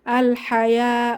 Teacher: জবরের বাম পাশে খালি আলিফ এক আলিফ টেনে পড়বো